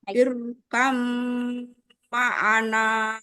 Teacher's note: Jadi jangan tidak boleh banyak getarannya, hanya sekali saja.